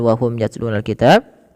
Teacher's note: Ini suara mimnya dibaca dengan jelas karena ada huruf mim bertemu dengan huruf ya. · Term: izhar syafawi